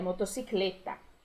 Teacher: Lembrando que o E é fechadinho, né?